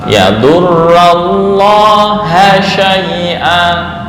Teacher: Yadurrallaha syai', bukan hu tapi ha